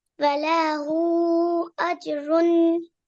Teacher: And at the end, we have a tanween. So we have to make a slight nasal sound.